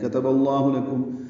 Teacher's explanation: کاف تا با جلدی پڑھیں گے، با کو لفظ اللہ کے لام سے ملائیں گے ، اظہار لام پر پڑھیں گے، اور ادغام شمسی ہو رہا